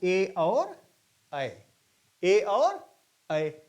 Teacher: जो स्पर्श होता है वो कंठ और तालु दोनों पर जीभ का होता है, इन्हें कहा जाता है कंठ तालव्य। कंठ तालव्य, कंठ पर भी स्पर्श हो रहा है और तालु पर भी।